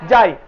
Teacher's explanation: যেখানে আসলো আ প্লাস কি ই, তাহলে চলে আসছে কি আই। এই আই একটা যৌগিক স্বরধ্বনি।